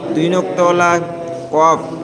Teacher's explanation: জীবের গোড়া এবং তার বরাবর উপরে তালুর সাথে লাগিয়ে উচ্চারিত হয়